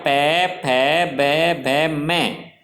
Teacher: प वर्ग के जो व्यंजन हैं वो हमारे होठ आपस में टकराते हैं जब ध्वनि उत्पन्न होती है